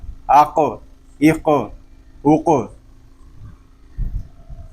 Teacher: ہم آواز کو جاری نہیں کریں گے بلکہ آواز اور سانس دونوں کو ہم کلکلے پہ ختم کریں گے